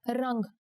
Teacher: Here the anuswar makes it sound like the ng in the English word song.